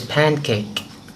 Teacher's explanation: Another example is the phoneme N in the word pan is a voice alveolar nasal, but when it's joined to form the word pancake, many people pronounce the N now as a velar nasal.